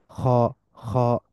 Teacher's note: মুখটা একটু গোল হয়ে যাবে এটাকে আরবিতে বলা হয় তাফকিম